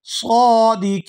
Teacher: आखिर से नून को वक़फ़ की वजह से साकिन कर दिया जाएगा और नून साकिन होने की वजह से यहाँ पर मद होगी